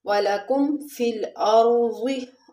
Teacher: را کو ہم موٹا پڑھیں گے کیونکہ اس سے پہلے زبر ہے